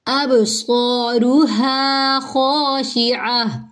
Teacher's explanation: حمزہ کو با سے ملائیں گے، اب کلکلا کریں گے